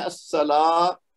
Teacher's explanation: very good, کیونکہ اس میں دیکھیے پہلے سین مشدد ہے تو اس کو ہم نے زور دے کے پڑھنا ہے، پھر لام کے بعد الف مد ہے، 2 حرکت دینا ہے